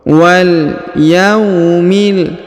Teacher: huruf ya diayun sekali karena di depannya terdapat waw sukun